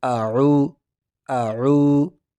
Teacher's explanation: آگے جو ہے واو، اس کو ہم تھوڑا سا کھینچیں گے، اعو اعو، تھوڑا سا کھینچنا ہے، اعو۔